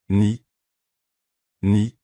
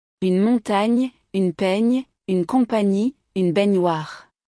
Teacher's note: la langue s'appuie contre le palais près de l'avant, tout comme pour dire ni en anglais, mais avec un glissement plus doux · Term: Le son GN